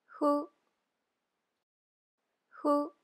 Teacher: hu or fu so the pronunciation is kind of in between H and F